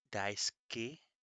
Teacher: So I pronounce it ski. It uses not silent letters, but it uses whispered letters. So the U is in there even when I say it. Daisuke. So that little pause kind of sound is the whispered U in daisuke.